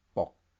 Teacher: The tone is also different it's a low sad tone